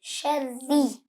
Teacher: را مشدد کے نیچے اگر زیر ہو تو را کو کیا کریں گے؟ باریک پڑھیں گے